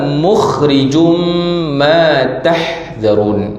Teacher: Tu dengung juga tu, tanwin bertemu dengan mim. Okey, idgham ma'al gunnah. Masukkan dalam mim bersama dengan dengung.